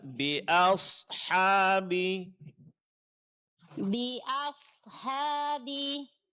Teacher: Ya, huruf H-nya jelaskan ya. Dan huruf shad-nya tebalkan